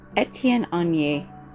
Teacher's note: carry that N over into the A so that you have the correct pronunciation. So once again, it's Étienne Aigner.